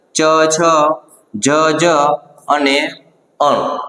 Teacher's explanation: તાલવ્ય વ્યંજન કે જે તાળવા દ્વારા ઉચ્ચારાય છે